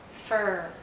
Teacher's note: for IR the tip of our tongue is actually curled backward and as it curls back the central part of her tongue goes up